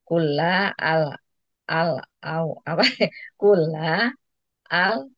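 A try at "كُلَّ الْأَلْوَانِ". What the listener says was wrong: disambung aja. Kullal alwan. Jadi kullal alwan.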